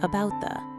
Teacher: 'the' is said in its weak form, 'the', which means it's shortened and unstressed